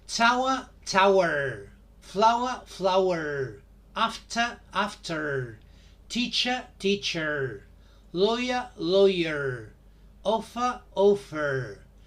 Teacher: In North American English, the the ending is in e r, er, and the R is strongly pronounced.